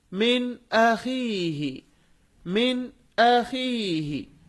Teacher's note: نون ساکن کی آواز کو ہم ظاہر کر رہے ہیں. کیوں؟ اس کے بعد حمزہ ہے اور وہ حمزہ حروف حلقی میں سے ہے